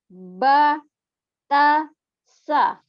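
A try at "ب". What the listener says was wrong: Tidak ba, bibir bagian dalam bertemunya. Ba, tidak ba, tidak perlu dilipat bibirnya. Ba, ba.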